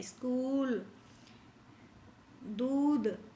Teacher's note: तो ये बड़ी ऊ की मात्रा देर तक बोले जाते हैं